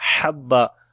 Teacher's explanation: Ha we read from the middle of the throat, and when we stop here, so we skip one fatha and one fatha only we read.